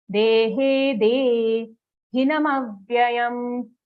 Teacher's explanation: So here, dehe, both dirgha sounds, next sound also de, dehe, de, all of these are dirgha long sounds, but after that, all the sounds are short hrasva sounds, so we will say them quickly. Dehe, de, hinam avyayam, hina, full na sound, it's a short sound, but it's a full sound, hina, mavyayam, aghat on ma, mavya, mavyayam, vya, and then yam.